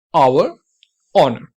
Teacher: लेकिन कुछ केसेस में जैसे कि ऑनर and आवर, in cases में क्या होता है कि आप H की साउंड को पूरी तरीके से एलिमिनेट कर देते हैं, जैसे कि H वहां पे है ही नहीं, तो H वहां पे साइलेंट हो जाता है.